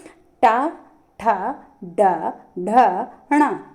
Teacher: ट वर्ग तो किससे उच्चारित करते हैं मूर्धा मूर्धा